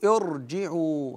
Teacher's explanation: الراء تفخم مع الكسر غير الاصلي نقول ارجعوا هكذا وليس ار ارجعوا قياسا على فرعون ومريه وشرعه